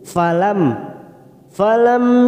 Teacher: namanya Idhar syafawi mim sukun kita baca jelas tanpa mendengung